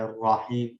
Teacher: راحیم وغیرہ کا را زبر والا ہے، راحیم اس کو ہم بولڈ پڑھ رہے ہوتے ہیں